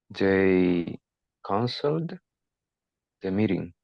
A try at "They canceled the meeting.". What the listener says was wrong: Right? Correct.